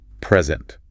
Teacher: As the noun, it's a gift. Stress on the first syllable. · Stress on the first syllable. Present. Present. The PRE is loud and clear.